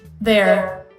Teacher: so no diphthong just one vowel remaining plus the r sound